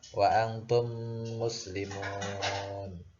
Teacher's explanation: Jadi apabila ada mim mati bertemu dengan huruf mim, maka disebut dengan idgham mimi. Cara membacanya memasukkan huruf mim kepada huruf mim juga dan disertai dengan dengung.